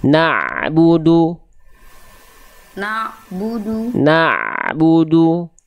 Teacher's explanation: jangan ada puncaknya, jangan terhenti antara na dengan bu, jangan ada jeda. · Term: ain sukun